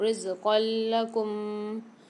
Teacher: دو زبر کی تنوین کے بعد لام مشدد آ رہی ہے تو یہاں پر ہم اس کو ملا کر پڑھیں گے